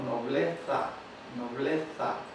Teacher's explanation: Eso es lo que sería interdental, la lengua o el ápice de la lengua en medio de los dientes